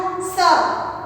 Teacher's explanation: જ્યાં દાંત અને પેડા જોડાય છે ત્યાં સ બોલાય છે